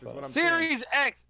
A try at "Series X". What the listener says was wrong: Well, the way you talk, it sounds like you're saying S. you're like Series S.